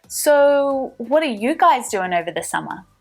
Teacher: let's move the stress back to the subject you guys